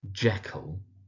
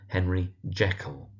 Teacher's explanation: Emphasis on the Jack part, the first syllable.